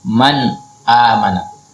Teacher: kalau nun sukun ketemu hamzah maka dibaca jelas